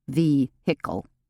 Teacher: She pronounced it vehicle, hitting three distinct syllables like the police often did